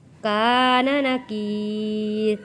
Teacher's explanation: الف ہے، الف سے پہلے زبر ہے، حروف مدہ ہے، حروف مدہ کو ایک الف کے برابر کھینچ کر پڑھتے ہیں۔